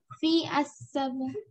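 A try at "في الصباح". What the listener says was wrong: Fis-sabahi. When we have shadda alif lam become silent. Fis.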